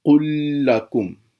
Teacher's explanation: پہلا لام نہیں پڑھا جائے گا، دوسرا لام 2 دفعہ پڑھا جائے گا۔ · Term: متماثلین